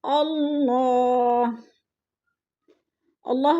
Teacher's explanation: اللہ، اللہ پر پڑھا جائے گا، اللہ سے پہلے لفظ حمزہ کے اوپر زبر ہے تو اللہ کو پر کر کے پڑھیں گے